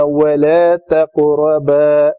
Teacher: قاف قلقلہ ہے، موٹا قلقلہ ہونا چاہیے، آگے را بھی موٹی ہے زبر کے ساتھ